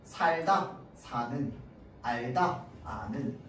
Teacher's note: 어간 받침 리을 뒤에 니은으로 시작하는 어미가 오면 뭐가 된다고? 리을이 탈락한다고.